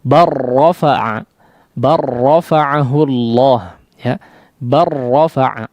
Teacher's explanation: Maka dibaca langsung ya, kalau dalam kondisi seperti ini dibaca langsung idgham kamil disebutnya sempurna, langsung masuk kepada huruf ra. Barrafa'a, barrafa'ahu Allah, ya.